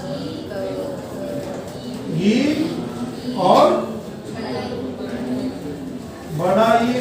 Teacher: अग्र स्वर कहलाते हैं। इनका उच्चारण जिह्वा के अगले भाग से होता है